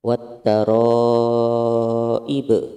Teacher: Hukumnya idgham samsiyah, ada alif lam bertemu dengan ta, lamnya tidak dibaca.